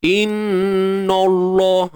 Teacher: Dan jangan tebalkan nun. Yang tebal tu pada lam je. Inna. Na masih lagi keadaan yang asal dia.